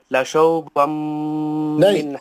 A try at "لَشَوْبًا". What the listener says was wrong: نہیں صحیح پڑھیے. لین کو اچھا پڑھیے. کیسا پڑھنا ہے وہاں پہ؟ پھر آپ لام کو لمبا کیوں کریں؟